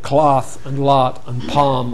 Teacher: Lot and palm have fallen together, but cloth may be different. Sometimes cloth is the same as lot.